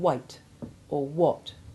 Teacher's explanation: the combination WH, in which the H is almost always silent, or virtually so